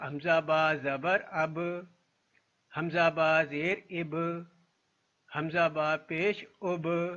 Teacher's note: حمزہ با زبر اب، اب کیونکہ با قلقلہ حرف ہے اور اس کے اوپر جزم آ گیا تو یہاں پہ اس کی قلقلہ کی آواز پیدا ہوگی۔ یہ بات یاد رکھنی ہے کہ قلقلہ کی آواز صرف اسی صورت میں پیدا ہوگی جب وہ ساکن حرف میں تبدیل ہوگا۔